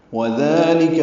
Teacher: وَذَلِكَ میں واو ہونٹوں کی نا تمام گلائی سے ادا ہوگی، دال نرمی سے ادا کریں گے، 2 حرکات لمبا کریں گے، لام کاف باریک ہے۔